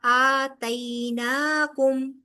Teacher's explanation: یائے لین ہے، بغیر کھینچے ہوئے نرمی سے ادا ہوگا